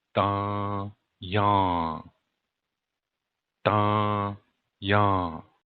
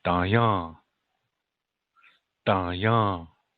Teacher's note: the middle okay da-jung and you hear nasal sounds da-jung da-jung the accents on the second syllable